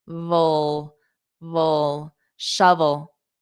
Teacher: Vol. Oh, so it ends on the dark L